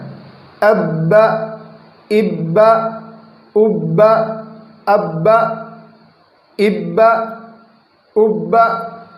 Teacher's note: جھٹکا نہیں ہونا ہے، حمزہ کی بو پیدا نہیں ہونی ہے اور اس کو حرکت کو دراز نہیں کرنا ہے